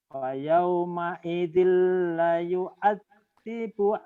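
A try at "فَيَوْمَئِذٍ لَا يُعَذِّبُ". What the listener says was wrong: Fa yauma idzil la panjang. Fa yauma idzil la yu'adzibu 'adzabahu ahad.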